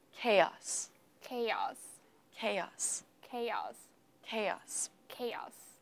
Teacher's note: I think the stress is on the first syllable